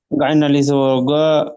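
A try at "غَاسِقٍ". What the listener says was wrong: গাই নয়, গইন আলিফ জাবার গ। গয়নের পরে সিন আছে, সিন জের সি।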